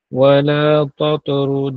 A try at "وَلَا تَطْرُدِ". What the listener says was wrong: Sebut ta dengan apa? Jangan wala tato sama-sama. Wala tato. Ta lebar, to tebal. Tato. Ta nipis.